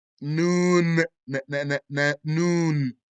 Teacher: Noon is a medium low letter of air suppression, mouth expansion, humming, meaning the ghunna, and dhalq.